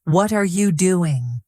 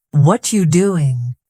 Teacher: what are you doing slowly? It is clear but quickly it becomes what you doing